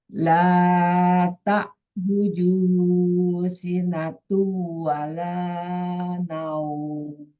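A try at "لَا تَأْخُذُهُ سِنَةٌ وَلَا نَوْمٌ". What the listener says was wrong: La ta khu. Khu-nya itu pakai kho, bukan pakai ha. Bergetar tenggorokannya. Sinatu wala naum. Tu-nya tahan. La ta'khuduhu sinatu wala naum.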